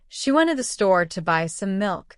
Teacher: For example, if someone says, "She went to the store to buy some milk," you'll notice that the words she, went, store, buy, and milk are stressed. They sound louder and longer. The other words to this some are said quickly and softly in between.